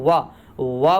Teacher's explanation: वा बोलेंगे तो कंठ के साथ साथ ओठ का मूवमेंट होता है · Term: कंठ और ओष्ठ